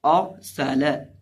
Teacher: अब इस लफ्ज़ के अंदर देखिए हमारे पास कुल 4 हर्फ हैं, हमदा रॉ सीन और लाम। रॉ को जब हम पढ़ेंगे तो रॉ को पुर करके पढ़ेंगे क्योंकि रॉ से पहले ज़बर है